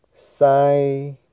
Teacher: 塞就是第一声比较高，高频声